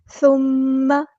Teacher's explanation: ثم میم پہ غنہ زمانی ہو رہا ہے، الف کے برابر رکنا ہے